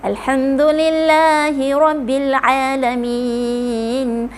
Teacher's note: lam ni hujung lidah ditolak ke sisi kiri atau kanan gusi hadapan. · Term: huruf lam